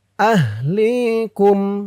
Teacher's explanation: লি এক আলিফ টান, জেরের পরে ইয়া সাকিন,